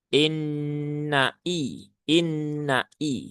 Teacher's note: hamzahnya harus jelas ya. Inna i inna i ya nai bukan na tapi nai